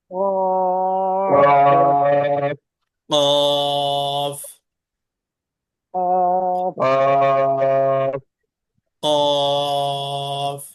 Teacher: তালু অর্থাৎ একটু ডিপ থেকে একটু গভীর থেকে উচ্চারণটা করতে হবে জিহ্বার গোড়ার বরাবর উপরের তালু মানে ভিতর থেকে উচ্চারণটা হবে